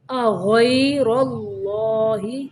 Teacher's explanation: غین کو موٹا پڑھنا ہے را کو بھی موٹا پڑھنا ہے اور اللہ کے لام کو بھی موٹا پڑھنا ہے